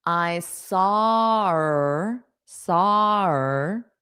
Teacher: This H is just naturally dropped in connected pronunciation in real English because it makes it easier to pronounce.